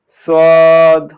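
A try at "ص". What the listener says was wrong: হ্যাঁ, সদটা আরেকটু মোটা করে বলতে হবে, সদ।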